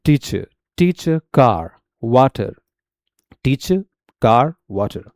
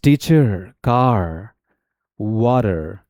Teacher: British English में जो आर होता है साइलेंट होता है, और उसकी जगह पर हम लोग श्वा साउंड यूज करते हैं